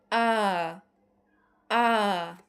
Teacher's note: আ আ আ উচ্চারণ করার সময় আমাদের ঠোঁটটা কতটুকু খুলছে? আমাদের ঠোঁটটা তখন বিবৃত হয়ে যাচ্ছে, কারণ আমাদের ঠোঁটটা তখন পুরোপুরি খুলতে হচ্ছে, একটু বেশি করে খুলতে হচ্ছে। আ আ তাহলে আমাদের উত্তর হবে বিবৃত।